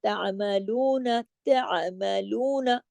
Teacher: عین کو جماؤ کے ساتھ پڑھنا ہے جھٹکا نہیں دینا ہے اور ضرور اپنے گلے سے اس کی آواز کو نکالنا ہے